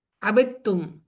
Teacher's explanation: یہاں پر تا پر تشدید اس لیے آئی کیونکہ دال اور تا کا مخرج سیم ہے، اس وجہ سے اس کو اس کے ساتھ ادغام کیا گیا